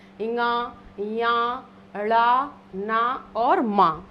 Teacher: इन 5 का उच्चारण स्थान नासिका होता है